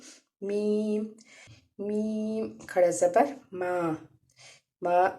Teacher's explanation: मीम को हम होठों के खुश्क हिस्से से इसको अदा करेंगे। मीम, मीम खड़ा ज़बर मा, मा, मीम को हम एक अलिफ के बराबर खींच के पढ़ेंगे।